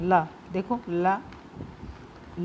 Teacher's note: वायु जीभ के दोनों बगल से, दोनों तरफ से, कहने का मतलब है जो वायु है, हम बोलेंगे जब इसको व्यंजन को, तो वायु जो है जीभ के दोनों तरफ से, बगल के दोनों तरफ से निकल जाती है बाहर। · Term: पार्श्विक